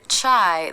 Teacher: the tongue is just coming down from being up for the CH position no pullback of the tongue